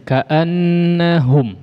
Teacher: Keluarkan dari jauf saja, jangan melibatkan khayshum.